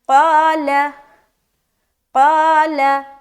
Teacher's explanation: काला क मोटा होगा ला बारीक · قا موٹا ہوگا، لا باریک